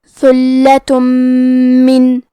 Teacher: ادغام کا معنی ہے حرف کو حرف میں داخل کرنا، تو ہم تنوین کو میم میں ملا کے غنہ اور تشدید کے ساتھ یہ حکم کو ادا کریں گے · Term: ادغام بغنہ